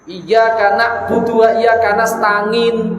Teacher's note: Tidak boleh kita itu mengucapkan ain disidahkan, tidak boleh ain itu dilunakkan, tapi di pertengahan. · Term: huruf bainiyah